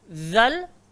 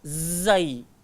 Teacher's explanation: Mereka sangat hampir pada makhraj tempat keluar dan sangat hampir pada sifatnya, dan mereka dah bertemu sebagaimana huruf zal dan juga zai. Ingat macam mana cara nak sebut huruf zal? Kena gigit lidah. Dan macam mana nak sebut huruf zai? Hujung lidah langgar gigi bawah. Jadi kita nak sebut zal dengan zai, dia dah hampir sangat dah. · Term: mutaqaribain